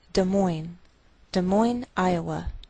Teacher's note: we treat the name of this capital like one word, and the greater stress is on the second part